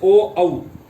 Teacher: कंठोष्ठी भी होते हैं, कंठ और होठ दोनों काम करते हैं